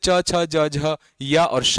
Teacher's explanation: तालु से च छ ज झ या और शा निकलता है